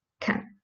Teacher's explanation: in the speech flow you may hear it as can like with a schwa